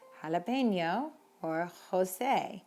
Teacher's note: J makes an H sound in Spanish. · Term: jota